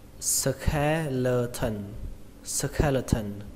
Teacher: bộ xương thì các bạn đọc là skeleton, skeleton. Trọng âm của từ này rơi vào âm đầu tiên, đó là âm khè, âm khè trong từ khe suối, skeleton.